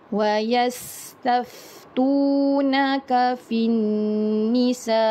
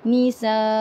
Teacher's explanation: kalau kita nak berhenti pada huruf Hamzah ni, kita naikkan sikit suara kita ketika kita nak berhenti